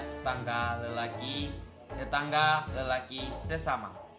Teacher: pengulangan suku pertama pada leksem dengan pelemahan vokal